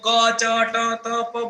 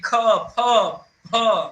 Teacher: पढ़े उसमें से कोई भी दूसरा और चौथा वर्ण आप बोलोगे तो हवा का सीधा फोर्स निकलेगा क्योंकि वो महाप्राण है उनके लिए बहुत बड़ी हवा की जरूरत होती है और बाकी